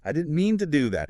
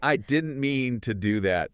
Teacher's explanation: The jaw drops. The vowels stretch out.